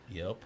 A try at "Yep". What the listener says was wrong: No, you got to drag it longer. Yep.